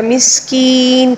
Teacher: جب زیر کو ہم وقف کی وجہ سے ساکن کے ساتھ پڑھیں گے تو یا مدہ کو 3 الف کے برابر کھینچنا ہوگا. مسکین، کین کو ہم نے 3 الف کے برابر پڑھنا ہوگا